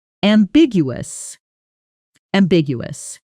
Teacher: Notice the stress lands on the second syllable, ambigu. And in fast speech, "that's pretty ambiguous" often blurs into "that's pretty ambiguous." The middle syllables almost swallowed together.